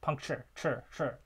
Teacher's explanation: we would have a light final syllable because that final syllable is actually a syllabic consonant. And so there's nothing in coda.